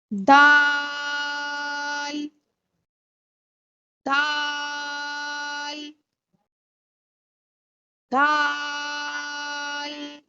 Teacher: नोक रि बान टिप ऑफ द टंग रि बान की नोक जब ऊपर के दो दांतों की जड़ से लगे ऊपर के दो दांतों के मसूड़ों से लगे तो दाल अदा होता है · की क्लास का तीसरा अरबिक लेटर दाल की आवाज बारीक है दाल अदा करते हुए हमारी आवाज बारीक होगी